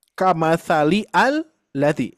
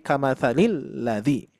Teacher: sini nyambung gitu ya nyambung ya itu jadi tidak tidak berfungsi Hamzah wasalnya tidak dibaca itu fungsi Hamzah wasal ya maka kita baca Mat kamatsalilladzi bukan kamatsali aladzi bukan kamatali alladzi